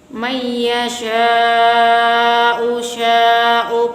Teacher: Jadi panjangnya harus 2,5 alif sama dengan 5 harokat, 5 gerakan, 5 ketukan, 5 kata. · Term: mat wajib mutasil